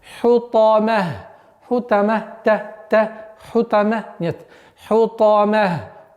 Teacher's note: Та максимально твердость проявляем, свойства твердости и эмфатичности у звука та.